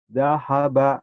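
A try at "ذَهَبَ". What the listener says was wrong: Agak rapuh dikit, ada titiknya. Zahaba, zahaba gede. Zahaba.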